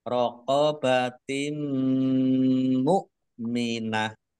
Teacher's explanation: bunah masuk dengan mendengung yaitu mendengung mim ditandai mimnya ada tasdidnya mim tasdid dibaca ghunah atau mendengung ditahan dua harakat